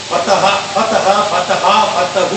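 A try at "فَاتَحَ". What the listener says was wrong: نہیں وہ سیم لگ رہا ہے یہ دونوں. اس کو کھینچنا ہے. ہاں پھر اگر آپ یہ نہیں سیکھو گے تو پھر کوئی بولے گا نا تو آپ دونوں کا میننگ ایک سمجھ لو. समझो मैंने बोला फतह फतह, आप क्या समझे दोनों एक है या अलग अलग है? आप बोलोगे फतह फतह, तब आप समझे ये तस्निया तस्निया।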